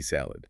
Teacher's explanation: in English, it stops the D, salad. The final consonant sound is very short.